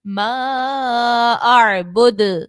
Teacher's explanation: اعبد اور آخر میں دیکھیں تو دال پہ پیش ہے تو ہم نے اسٹاپ کرنے کی صورت میں یہاں پر ہم نے اس کو ساکن کیا، اور جب ساکن کیا تو دال چونکہ حروف قلقلہ میں سے ہے اس لیے ہم نے قلقلہ کو خوب ظاہر کر کے ادا کرنا ہے